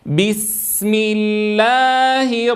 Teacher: وأتنبه في السين أن أعطيها حقها من الرخاوة مع إعطائها حقها من الصفير.